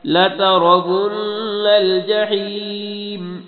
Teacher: را کو موٹا نون میں غنہ کرنا ہے